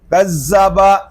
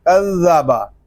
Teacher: ذال کو نرمی کے ساتھ ادا کریں گے، اس میں سیٹی کی آواز نہیں آنی چاہیے۔ اس کو کذبا اس طرح نہیں پڑھیں گے، اس کو پڑھیں گے کذبا۔